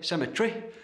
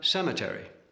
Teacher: far more even emphasis than the English and in particular than the clipped vowels of the English aristocracy